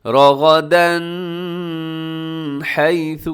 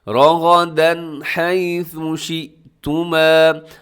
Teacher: یہاں غنہ نہیں ہے، کوئی اخفا نہیں ہے بلکہ اظہار ہے، تیزی سے پڑھنا ہے